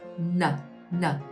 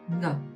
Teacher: if it's touching the hard palate, it becomes the N, not the NG